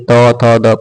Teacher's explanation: त वर्ग का उच्चार किससे होता है? तो कहेंगे दंत से या दांत से।